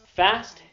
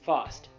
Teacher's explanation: you switch the ah to an aw sound